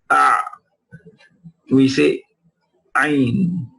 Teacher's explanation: So when the epiglottis moves backwards, it narrows down the articulation point of the ayn, and so the sound of the ayn emerges even if it has sukoon or any other vowel mark